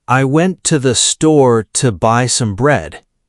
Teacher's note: Went, store, buy, bread are loud. I, to, the, some are almost invisible. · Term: rhythm of English